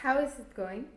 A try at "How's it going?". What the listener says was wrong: No, how's. You're trying to put the is there. How's it going? Enlazarlo directamente al it.